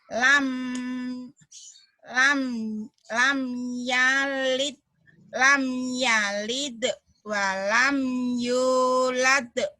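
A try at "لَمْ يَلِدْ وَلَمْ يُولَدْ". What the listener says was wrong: Pinter.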